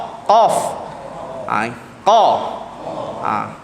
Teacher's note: Tahan nafas sebut huruf ni kerana huruf ni bukan hamas. Sebab ramai orang yang sebut qa ni dia angin. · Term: qaf